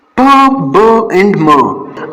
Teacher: It means that कि ये जो 2 आर्टिकुलेटर्स है mean lips, upper lips एंड lower lips, ये दोनों जब आपस में मिलते हैं तो ये कौन से साउंड प्रोड्यूस करते हैं? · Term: बाइलेबियल